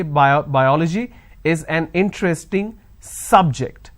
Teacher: the noun as the first example biology is an interesting subject I am stressing on the first syllable